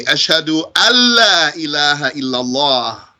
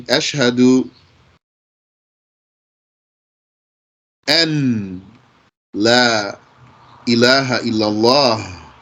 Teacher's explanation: And you know how the noon in Arabic can blend into the lam